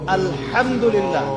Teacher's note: এই হা এর মাখরাজ কোথায়? কণ্ঠনালীর মাঝখান থেকে।